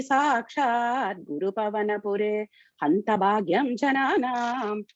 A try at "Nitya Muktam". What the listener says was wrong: After Nitya Muktam, there is a pause. Okay, because otherwise you are pausing after Nigama Shata Sahasrena. After Nitya Muktam, there is a pause.